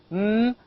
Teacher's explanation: M is a nasal sound. It is a voice sound.